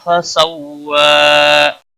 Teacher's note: فسوی، واو کے اوپر کھڑی زبر ہے، ایک الف کے برابر کھینچ کر پڑھیں گے، وقف کی صورت میں بھی ایک الف کے برابر ہی کھینچ کر وقف کریں گے۔